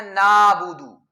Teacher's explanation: تو اس میں غلطی کیا ہوتی ہے کہ بہت سارے لوگ پڑھتے ہیں نابود، تو وہ عین کو ساکن کر کے اس کی جگہ پر الف لگا دیتے ہیں